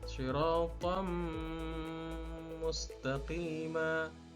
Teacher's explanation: Suara dari tanwin dimasukkan ke dalam huruf mim sehingga bacanya adalah siratam mustaqima. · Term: idgham bi gunnah